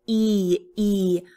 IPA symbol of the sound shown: i